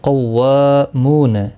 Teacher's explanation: قاف حروف مستعلیہ ہے، پر پڑھا جائے گا. واو کے اوپر کھڑی زبر ہے، ایک الف کی مقدار کے برابر کھینچ کر پڑھیں گے.